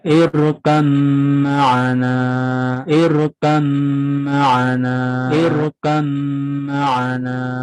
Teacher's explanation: cara membacanya harus diidghamkan dan disertai dengan dengung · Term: idgham mutajanisain